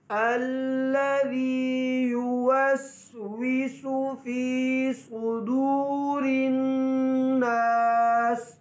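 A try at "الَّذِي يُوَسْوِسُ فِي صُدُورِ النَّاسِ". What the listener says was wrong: ये युवस्विसु में जो या के ऊपर पेश है ये यो की आवाज़ ना हो।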